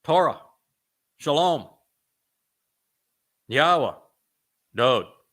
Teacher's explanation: They all share that Wa open mouth vowel O sound in common.